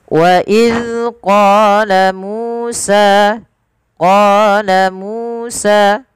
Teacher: Pada fal qa panjangkan 2 harakat karena dia mad tabi'i. Musa sama, panjang qa, mu dan sa harus sama. Karena ketiga-tiga bacaan ini adalah mad tabi'i.